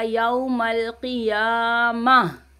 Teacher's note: गोलता को हम हा में बदल देंगे, रुकेंगे तो